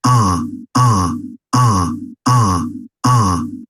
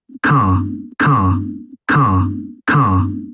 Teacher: A gente vê que som longo, mas sem pronunciar o R.